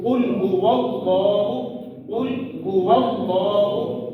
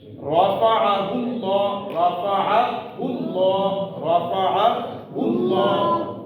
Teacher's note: رفعہ اللہ, رفعہ اللہ, رفعہ اللہ, یہاں پر بھی پیش ہے, الٹا پیش ہے, تو اس لیے اس کو موٹا پڑھا جائے گا. تو لفظ اللہ کا جو لام ہے اس سے پہلے والے حرف کے اوپر زبر ہو یا پیش ہو تو اس کو موٹا پڑھیں گے